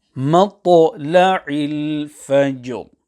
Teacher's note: So in conclusion here, the manner of recitation on the word Qadr in verses 1 and 2 and Fajr in verse number 6, that will be same, where the qalqalah on the second to last letter will join onto the ra sakina · the qalqalah on the jim will join with the ra upon which waqf is being carried out